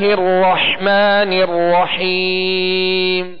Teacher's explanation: را جو مشدد ہے اس کو بھی دوہرا پڑھیں گے اور حا کو واضح پڑھیں گے.